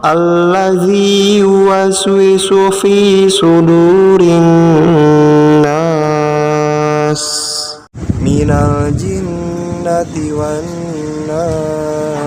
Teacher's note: Itu adalah gunnah. Jadi nunnya ditekan ya dan didengungkan.